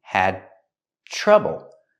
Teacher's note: The D in had is before the T, so it's a stop D.